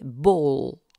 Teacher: Il y a enfin le L dit sombre ou gras ou dur de l'anglais ball, qui est un nouveau cas de double articulation. En effet, tandis que la pointe de la langue touche les alvéoles, le lieu de contact, l'arrière de la langue crée une distance approximante avec le voile du palais. On parle alors de liquide alvéolaire vélarisé.